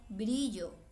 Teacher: el sonido de la R después de estas consonantes es débil